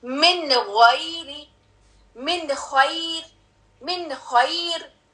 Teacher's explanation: clear sound آئے گی اس کی، یعنی کہ ٹچ ہوگی زبان جا کے آپ کے اس آرٹیکولیشن، نون کے آرٹیکولیشن پوائنٹ پہ